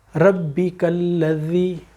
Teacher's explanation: اس ذال کا مخرج یہ ہمارے سامنے کے دونوں بڑے دانتوں کے نیچے زبان کا تھوڑا سا آ جانا ہے، اور اگر زبان اندر رہ گئی تو پھر یہ زا بن جائے گا، جس سے وہ زمزم ہوتا ہے تو وہ لفظ غلط ہو جاتا ہے.